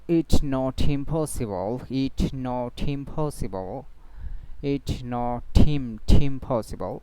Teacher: দুই শব্দের মধ্যে পজ দেওয়া হবে না, বরং একটার সাথে একটা মিলিয়ে পড়া হবে। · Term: কনসোনান্ট টু ভাওয়েল লিঙ্কিং